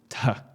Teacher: The reason why Latin used this particular combination of letters to write the sound represented by theta is because theta literally sounded like a breathier t